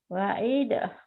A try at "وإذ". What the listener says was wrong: jangan ada e-nya.